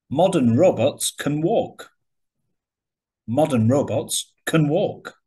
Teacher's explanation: So, can is usually weak and not stressed when it's in a longer sentence.